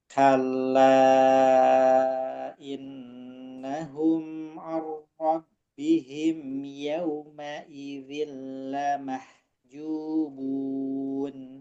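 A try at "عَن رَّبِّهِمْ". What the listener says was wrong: Baca arra, tipis a. Arra tanpa hidung a. A. Arra. Kalau bihim sama agak tasdid ke him karena ketekan. Ar-rabbihim saja.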